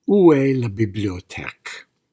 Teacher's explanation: make that exotic oo sound through pursed lips